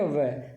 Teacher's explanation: जब वह बोलते हैं तो ऊपर के दांत और नीचे का ओष्ठ दोनों ही काम में आते हैं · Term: दंतोष्ठ